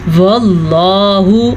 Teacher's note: لفظ اللہ سے پیچھے والے حرف پہ زبر ہے تو لفظ اللہ کو ہم پر پڑھیں گے